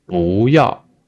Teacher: 不要, because this 要 is a fourth tone, so this 不, originally this 不 is also a fourth tone, but with this 要, this 不 changed to the second tone